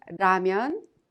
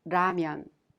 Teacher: you can consider it a sound in between the L Sound and the r sound